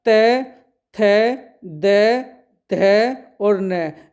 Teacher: ये दांतों को स्पर्श करते हैं, मतलब ये कहां से बोले जाते हैं, तो जब भी इन शब्दों को आप बोलोगे तो आपके उच्चारण के समय जो जीभ होगी वो दांत पे लगेगी ही लगेगी। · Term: त वर्ग, तय वर्ग